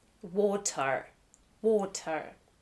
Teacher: But in rhotic dialects, like most of North American English, ER designates an R-colored schwa, which is pronounced like schwa, except the tongue is pulled back in the mouth and bunched up.